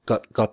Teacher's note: I know it's pronounced with a glottal stop